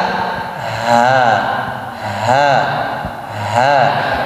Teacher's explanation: Jadi tidak tidak ditahan, lepas, udaranya lepas. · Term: hamas